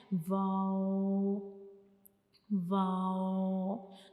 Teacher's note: واو کو ہم پڑھتے ہوئے ہمارے جو دونوں ہونٹ ہیں وہ آپس میں ایک سرکل بناتے ہیں، آپس میں ملے بغیر